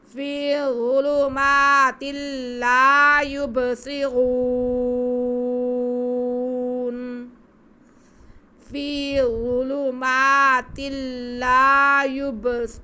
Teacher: مد عارض ہوگی، وقف ہم کھینچ کے کریں گے